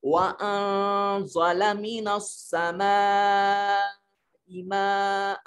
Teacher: زالہ میں نون ساکن کے بعد زا ہے جو حروف اخفا میں سے ہے، نون کو اپنے مخرج میں چھپا کر پڑھنے کی کوشش کریں گے